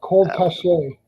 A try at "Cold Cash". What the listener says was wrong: Cold Cash. So it's actually cash. It's actually pronounced cash. It looks like cachet, but it's actually pronounced cash.